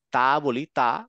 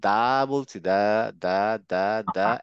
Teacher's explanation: গলার ঠিক মাঝ গলাবার একটা হাতটা রেখে ধরে যদি তা বলি তা জাস্ট বাতাস বের হয়ে যাচ্ছে কিন্তু দা বলছি দা দা দা দা একটা হালকা ভাইব্রেশন হয়